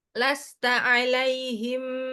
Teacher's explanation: Ta tipis ain tipis lam tipis enggak ada yang tebal di sini kecuali yang bimusir.